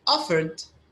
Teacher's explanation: offered it's just a d sound there's no it